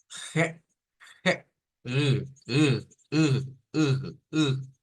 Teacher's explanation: es una r que se saca en la garganta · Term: r gutural